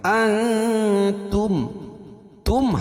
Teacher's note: نون ساکن کے بعد حروف اخفا کے 15 حرفوں میں سے تا ہے تو یہ ناک میں آواز کو چھپا کر پڑھیں گے